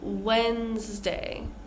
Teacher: first we have Wednesday so the first D is silent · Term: silent D's